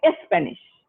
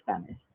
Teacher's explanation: when they even say the word spanish they say espanish instead of saying spanish they insert an e before the word spanish